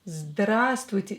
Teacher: This V is not pronounced at all here.